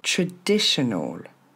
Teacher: c'est pas un a au début et ensuite c'est le son e